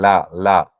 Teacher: a dental sound at the back of the Upper Front Teeth so the tongue touches the back of the upper teeth